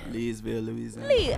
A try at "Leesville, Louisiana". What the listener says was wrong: Lazyville? I'm from New York, and it sounds like you're saying Lazyville.